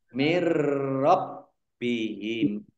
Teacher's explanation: Jadi masuk dengan tidak mendengung. Maksudnya masuk itu nunnya tidak dibaca, nun sukunnya tidak dibaca, langsung masuk ke huruf berikutnya. Yaitu ro, ditandai roknya ada tasdidnya. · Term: idgham bila gunnah